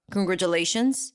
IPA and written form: kənɡrətʃəleɪʃənz (congratulations)